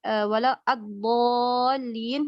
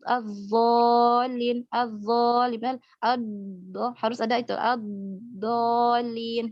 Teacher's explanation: Kemudian yang selanjutnya antara dot dan dha. Dot dan dha itu yang membedakan adalah sifat istitolah pada huruf dot ya.